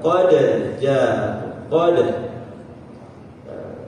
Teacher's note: Kemudian yang qalqalah itu sifatnya dia apa? Dipantulkan. Yang dipantulkan ya harus pantulkan.